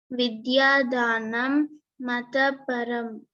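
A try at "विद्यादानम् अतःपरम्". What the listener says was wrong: No, you split it. Vidyadanam, then Ataparam.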